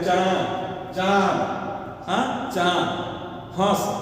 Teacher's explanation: जिस स्वर का उच्चारण मुख और नाक दोनों से हो उसको अनुनासिक कहते हैं।